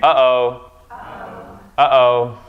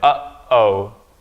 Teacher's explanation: That's a glottal stop. What it means is that it's stopping. You're stopping at the place of your vocal cords. You're not saying.